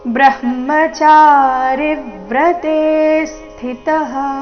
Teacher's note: ನಂತರ ಪೂರ್ತಿ ಮರಬೇಕು ಬ್ರಹ್ಮಚಾರಿ ವ್ರತೆ ಸ್ಥಿತಹ ಬ್ರಹ್ಮಚಾರಿ ವ್ರತೆ ರಿ ಮೇಲೆ ಆಘಾತ ತೆ ದೀರ್ಘ ಬಂದು ನಂತರ ಸೌಮ್ಯ ಆಘಾತ